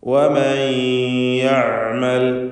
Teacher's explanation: വമൻ യഅമൽ, ഐനിൻ്റെ ഉച്ചാരണം ശ്രദ്ധിക്കുക. തൊണ്ടയുടെ മധ്യമാണ് ഐനിൻ്റെ മഖ്റജ്.